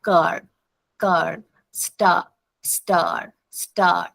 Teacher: the sound of R is dominating the sound of the vowels. Here we don't have the sound of vowels but we are having the sound of R. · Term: bossy R